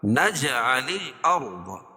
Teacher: را کو پر پڑھیں گے کیونکہ رائے ساکنہ سے پہلے زبر ہے. ضاد کو موٹا پڑھیں گے.